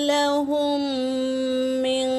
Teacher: میم ساکن کے بعد میم آیا ہے تو پہلے میم کو دوسرے میم میں ملا کر غننے کے ساتھ پڑھیں گے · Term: ادغام شفوی